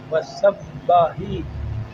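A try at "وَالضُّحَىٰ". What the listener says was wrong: دیکھیں پیش ہے نا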